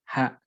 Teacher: ta marbutoh ketika dimatikan dia menjadi ha sempurna, ha, tidak kemudian ada pengaruh dari huruf lain, dia sempurna ha.